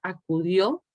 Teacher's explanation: la palabra acudió, a, cu, son sílabas átonas. Y la sílaba tónica sería dio, porque precisamente vean que la O tiene además un acento marcado, que indica que esa es la palabra, esa es la sílaba fuerte, la sílaba con mayor marca del acento.